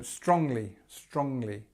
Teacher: it's a smaller word, so it starts at the beginning, the stress is at the beginning, strongly. We've got this sound, which usually comes at the end of words, like sing or walking, so in a continuous or a gerund form, but this time it comes in the middle.